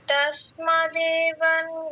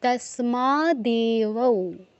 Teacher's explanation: দেবৌ, ও এর অটা বাদ চলে যাবে, শুধু উটা উচ্চারণ হবে অনুসারের জায়গায়